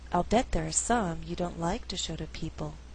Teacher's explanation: I could choose to stress in the second half of the sentence only like and people